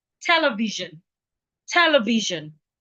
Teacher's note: They're stressing the te. The te takes the primary stress mark.